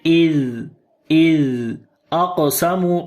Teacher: Is zal sound we read in soft sound, and also we continue our sound here because of rakhawa quality.